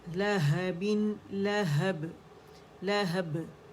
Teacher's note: बा बारीक है, हा बारीक है, लाम बारीक है